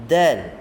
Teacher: Ujung lidah sentuh antara gusi dan gigi atas ataupun pangkal gigi atas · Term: huruf dal